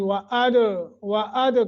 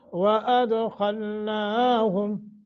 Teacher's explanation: واو کو تھوڑا سا موٹا کریں گے اور دال پہ قلقلہ کر کے پڑھیں گے ، یعنی وَأَد کر کے، خا کو بھی موٹا کریں گے،